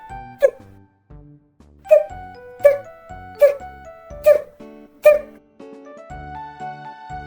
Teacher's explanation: Коли ми вимовляємо звук т, губи у легкій посмішці, зуби трохи відкриті, язик кінчиком упирається у верхні зуби. Повітря затримується, а потім швидко виходить, утворюючи т.